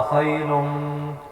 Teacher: اب خیرم پہ وہی جو میم مشدد آ رہی ہے تو یہاں پر جو ہے غنہ ہوگا